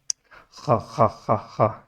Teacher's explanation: گلے میں کوئی چیز اٹکی ہو اس کو نکالنے کے لیے جو ساؤنڈ پیدا ہوتا ہے اس جگہ سے